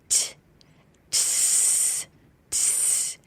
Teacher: the air courses through the tip of the tongue and the alveolar ridge and the front teeth